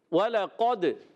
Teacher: زبان کی جڑ و تعلق کے نرم حصے سے قاف ادا ہوتا ہے، اور کو موٹا بھی رکھنا ہے۔ · وَلَقَدْ، دال حروف قلقلہ میں سے ہے، دال ساکن ہے، قلقلہ ہوگا، آواز لوٹ کر آئے گی